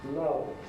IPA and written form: lʌvz (loves)